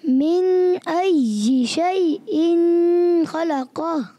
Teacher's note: जी अय्यि को अच्छे अंदाज से और शैइन में गुन्ना नहीं करेंगे, इजहार हल्की। मिन अय्यि शैइन खलक़ह।